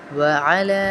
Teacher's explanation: لام کو اس لیے کھینچ رہے ہیں کیونکہ چھوٹا مد ہے، تین الف کے برابر کھینچیں گے